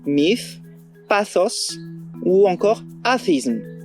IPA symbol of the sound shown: θ